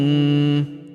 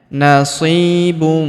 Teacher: Huruf si kita panjangkan 2 harokat karena ya sukun di depannya.